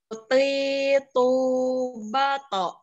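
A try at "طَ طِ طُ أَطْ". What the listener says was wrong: Nah, ini masih agak sama dengan huruf ta. Jadinya ti, ketika usahanya ti, bukan ti.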